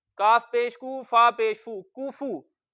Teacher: दोनों को होंठ गोल करके पढ़ेंगे और खींच कर नहीं पढ़ेंगे।